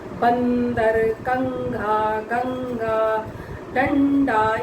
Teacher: अनुस्वार में मुख का इस्तेमाल कम और नाक की ध्वनि से, नाक से उसकी ध्वनि ज़्यादा आती है।